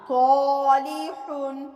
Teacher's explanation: आगे आप देखिए सालिहुन, ये भी अलिफ मोटा पढ़ा गया क्योंकि इसके पीछे मोटा हरूफ था। सालिहुन।